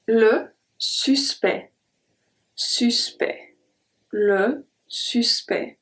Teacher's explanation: This is not what we saw before with direct, tact, and exact. This time we are not going to pronounce the C and the T at all.